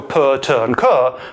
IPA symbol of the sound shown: p t k